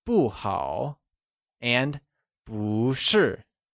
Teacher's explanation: sure you would also recall that boo becomes boo that is it changes from fourth tone to second tone when used alongside another falling tone or fourth tone